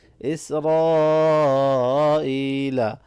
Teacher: را کے اوپر زبر ہے، اس کو موٹا پڑھنا ہے اور بڑی مد ہے، اس کو زیادہ کھینچ کے پڑھیں گے اور یا مدہ کو بھی کھینچ کے پڑھیں گے۔